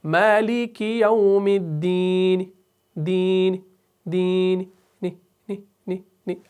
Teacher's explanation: آپ اتنا اس کو زور سے نہ پڑھیں کہ یہ زیر ہی لگے، بلکہ اس زیر کا تہائی حصہ آپ نے ادا کرنا ہے، تو اسے ہم کہیں گے وقف بالروم۔